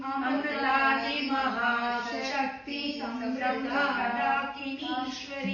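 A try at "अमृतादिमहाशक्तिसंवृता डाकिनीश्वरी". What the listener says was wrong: Don't say Samvrta Dakinishwari. That is what. Take a pause, small pause after Avrta. Amrtadi Mahashakti Amrtadi Mahashakti Samvrta Dakinishwari.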